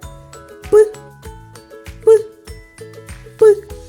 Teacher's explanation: звук п між зубками невеличка щілинка язичок лежить за нижніми зубами губи щільно стиснуті потім сильний струмень повітря розтуляє їх Таким чином у нас виходить з звук п діти а як · Коли ми промовляємо звук п ні горло не працює Отже звук п дзвінкий чи глухий так звук п глухий · звук п приголосний бо ми не можемо його проспівати бо є перешкода у вигляді губ